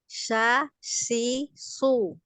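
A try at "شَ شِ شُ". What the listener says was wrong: Hati-hati ya, dipertahankan di tengah lidah ya. Dipertahankan di tengah lidah, jangan maju. Nanti ke ujung malah makhrajnya di huruf sin jadinya. Sya, jadi tetap di tengah ya. Nah, disebar udaranya itu menyebar ya. Sya, shi, shu.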